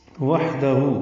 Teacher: واو میں ہونٹوں کو نا تمام گول کریں گے، ہا ساکن پہ ہم سے، ہو الٹا پیش ہے، 2 حرکات لمبا کریں گے.